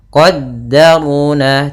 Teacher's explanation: ro-nya tebal karena ro berharakat fathah